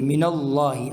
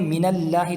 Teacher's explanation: لفظ اللہ سے پہلے زبر ہے تو ہم اس کو موٹا پڑھیں گے من اللہ، اگر کوئی یوں پڑھے من اللہ تو غلط ہے۔